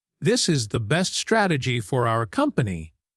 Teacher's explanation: When you say this is the best strategy for our company, your voice should drop at the end. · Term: falling intonation